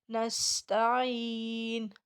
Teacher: نستعین سین کو سیٹی کے ساتھ ادا کریں گے